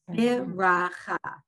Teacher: You hear the sound of the Shiva as a short, like, eh sound.